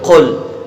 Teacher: قاف جو ہے یہ زبان کی جڑ اور تالو کے نرم حصے سے مل کر ادا ہوتا ہے